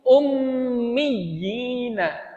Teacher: Itu perlu dikokohkan di ya tasdidnya sehingga tidak seperti mad tabi'i biasa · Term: mad tamkin